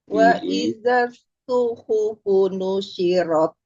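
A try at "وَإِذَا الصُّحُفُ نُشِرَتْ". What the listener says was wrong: Jelaskan S-nya dari sode, kemudian ha. Wa idza suhufu nusyirat.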